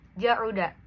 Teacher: huruf ain merupakan huruf yang paling jauh dalam makhrajnya